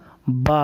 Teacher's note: با کا مخرج ہے دونوں ہونٹوں کی تری۔ تو جب دونوں ہونٹ کی تری کو اوپر اور نیچے کی تری کو حصہ ملائیں گے دونوں کو، تو یہ کیا ادا ہوگا؟